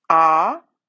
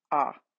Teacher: the difference is that the long vowel is held for twice as long as a short